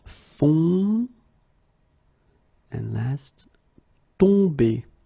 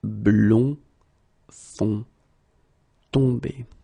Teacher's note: nasal, it goes in your nose, and then your mouth should be like really round.